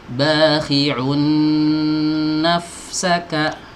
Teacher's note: tanwin dimasukkan ke huruf nun, ini idgham bi gunnah. Nah, kalau ada tanwin masuk ke huruf nun itu langsung aja masukkan.